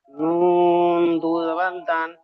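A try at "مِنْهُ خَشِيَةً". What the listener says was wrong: নুন নয়, বা। বা দু জবর বান, বা দু জবর বান। মিন হু খিতবান, মিন হু খিতবান। এখানে কায়দা এসছে।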